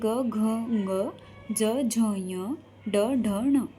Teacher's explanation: घोष म्हणजे आवाज घुमतो. जेव्हा आपण उच्चार करतो त्यावेळी आवाज घुमतो.